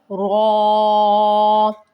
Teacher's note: اس کو منہ گول کر کے اور موٹا پڑھیں گے